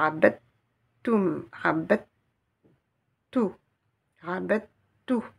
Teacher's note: Et j'ai la shedda. La shedda c'est pour nous montrer que la lettre DEL va être assimilée. Donc, je ne vais pas la prononcer.